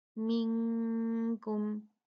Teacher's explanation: منکم نون ساکن اس کے بعد کاف حروف اخفا میں سے آیا ہے تو یہاں بھی 2 کاؤنٹ اخفا کیا جائے گا